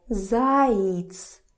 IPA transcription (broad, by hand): zaits